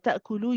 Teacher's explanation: Ta'kulu, you don't want to make the lu too long, one count only.